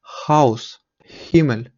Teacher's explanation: звучить як буква нечітка Г це більше така як подих